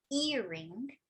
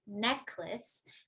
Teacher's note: So in earring, we say earring, and in necklace, necklace. So it's actually the modifier noun and not the head noun that's stressed